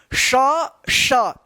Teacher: जीव जो है ना तालू पे गया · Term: तालब ष